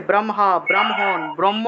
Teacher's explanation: কিন্তু উচ্চারণের ক্ষেত্রে মটাকে আগে উচ্চারণ করতে হয়, কারণ ম হলো একটা স্পর্শ বর্ণ